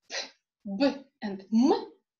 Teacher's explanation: Pay attention what happens to the lips. Both lips are involved. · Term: bilabial